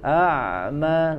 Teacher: di huruf Ain tidak boleh terjedak A tapi mengalir